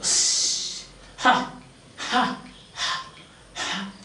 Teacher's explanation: place where it is produced, glottal. How it is produced? Friction.